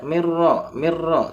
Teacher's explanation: Ini dibaca mirro mirro tanpa dengung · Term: Idham bilagunah